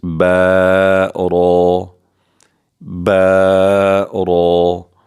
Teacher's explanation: با کو ہونٹ جوڑ کر ادا کریں گے باریکی کے ساتھ، اور را کو پر کر کے موٹا کر کے پڑھیں گے، با را۔